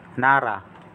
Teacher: kapag nasa gitna po ng dalawang vowels naging R po ang sound R Tapos po yung a nas gitna po ng dalawang a